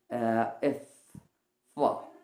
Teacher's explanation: আমাদের উপরের দাঁতের যে আগা বা কিনারাটা রয়েছে সেটা নিচের ঠোঁটের মাঝে স্পর্শ করে আমরা কিন্তু সেটা প্রডিউস করতে হয়